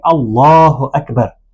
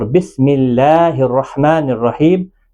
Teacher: بسم اللہ کے اندر لام باریک پڑا جاتا ہے. گویا کہ کنڈیشنل ہے، کبھی موٹا اور کبھی باریک پڑا جاتا ہے.